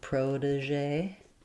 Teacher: So in protégé, we do stress on the first syllable. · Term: first syllable stress